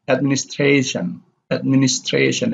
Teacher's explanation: they have the primary stress on the second syllable from the last like below so you have uh administration administration it's admin administration